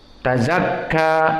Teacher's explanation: Man qad aflaha man tazakka, ta muraqqaqah, wa za muraqqaqah, wal kaf muraqqaqah, namun di sini tu'tabar idgham harfain. Tazakka, kaf sakinah dan kaf mutaharrikah dijadikan satu menjadi harfain. Tazakka, maka ka muraqqaqah dengan mad atau bi alif layyinah.